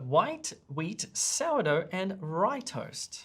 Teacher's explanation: the trick is up up up up up and then the final part of your list you pull it down gently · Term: list pattern